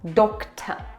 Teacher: schwa at the end is really nice and open.